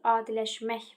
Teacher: Vurğu sözün son hecasındadır.